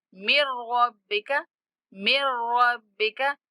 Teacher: नून का इदगाम करेंगे, नून नहीं पढ़ा जाएगा।